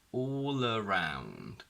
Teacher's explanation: Where we can see that all around has a clear L because we have the L at the end of all followed by a vowel from around, so it becomes clear